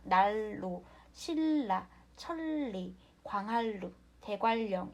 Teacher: 니은은 리을의 앞이나 뒤에서 리을로 발음한다. 자, 우리가 리을, 니은 연세 또는 니은, 리을 연세일 때는 모두 리을로 변하는 거죠. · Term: 유음화